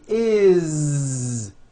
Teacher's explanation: that it's spelled with an S it's never is unvoiced never it's always is with a voiced Z